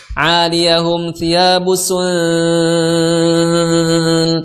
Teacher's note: suara dengungnya itu agak dominan sangat terdengar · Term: ikhfa aqrab